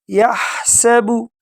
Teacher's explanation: یحسب، یحسب، ہا کو بالکل گلے کے شروع سے ادا کریں گے، یحسب، سین میں سٹی کی آواز نکالیں گے